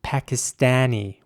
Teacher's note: in american english it would be pakistani with ä